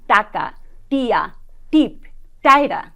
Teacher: ভাষাবিজ্ঞানীরা দেখেছেন যে আমরা যখন স্বাভাবিক কথা বলি আমাদের দৈনন্দিন আলাপচারিতায় আমরা কিন্তু ট বর্গের ধ্বনিগুলো মূর্ধা থেকে উচ্চারণ করি না উচ্চারিত হচ্ছে আমাদের দন্তমূল থেকে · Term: দন্তমূলীয় ধ্বনি